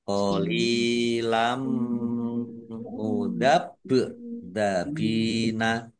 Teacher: Bak sukun bacaan kolkolah dibaca memantul ditampakkan pantulannya.